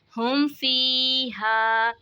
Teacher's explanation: میم ساکن کے بعد با اور میم کے علاوہ کوئی بھی دوسرا حرف آ جائے تو وہاں پہ اظہار شفوی ہوتا ہے، یعنی ہم نے یہاں پہ میم ساکن کی آواز کو ظاہر کر کے پڑھنا ہے، کوئی غنہ نہیں کرنا